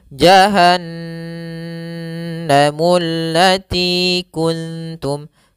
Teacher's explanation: Yaitu apabila adanya nun berharokat tasydid atau mim berharokat tasydid, maka ini kita namakan dengan bacaan gunnah. Cara membacanya yaitu suara n-nya ditahan atau suara m-nya ditahan. Maka di sini jahannamu, tidak langsung jahannamul lati, tapi tahan dulu 2 harokat.